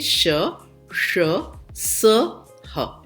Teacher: जिनके उच्चारण में जब हम बोलते हैं तो हमारे मुख से जो हवा है वो रगड़ खाकर निकलती है, तो उसमें एक प्रकार से ऊष्मा पैदा होती है। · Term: ऊष्म व्यंजन